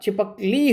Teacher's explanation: इसलिए इसका उच्चारण जब होगा तो तीनों जो शब्द हैं, तीनों जो वर्ण हैं छिपक एक साथ बोला जाएगा, और ली अलग से बल के साथ बोला जाएगा, इसलिए बलाघात होगा ली पर, ली ल के बड़ी ई की मात्रा पे, ठीक है, क्योंकि स्वर पर ही बलाघात होता है, इसलिए इसका उच्चारण भी छिपकली ना होकर छिपकली होगा, ठीक है।